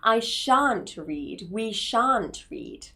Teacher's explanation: As a negative form, we just insert that word not, shall not. And shall not can also be contracted into shan't with a nice long R sound